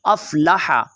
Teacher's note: इस हा को आपने ख्याल के साथ पढ़ना है, अफ़लहा नहीं पढ़ना, अफ़लह